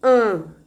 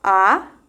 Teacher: você pode perceber o abaixamento do véu palatino quando você articula por exemplo uma vogal como um